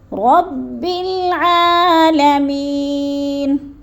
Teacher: رب عین کو حلق کے درمیانی حصے سے ادا کرنا ہے،